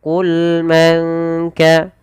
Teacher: Baik, pada lafal bacaan qul man kana, pada lafal lam qul, sempurnakan pada lafal lam yaitu sifat bainiyahnya, yaitu di antara tidak terlalu mengalirkan suaranya, ini tidak terlalu menahan.